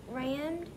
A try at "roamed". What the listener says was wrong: Not rammed. Remember, O-A sounds like O.